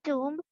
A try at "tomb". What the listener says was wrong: It's not a tomb, but tomb. The B is silent, like comb, tomb, womb, okay? No B sound. Climb a ladder. Tomb.